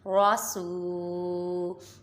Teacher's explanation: را کو پر بھی پڑھیں گے اور را متحرک، سین پہ واو مدہ ایک الف یعنی دو حرکات کے برابر کھینچ کے پڑھیں گے، لام متحرک اور ہا پہ کھری حرکات۔